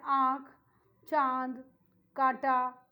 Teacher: इसका उच्चारण नाक और मुंह दोनों से होता है। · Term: अनुनासिक स्वर